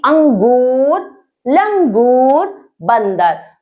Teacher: अनुस्वार के उच्चारण में श्वास नाक से निकलती है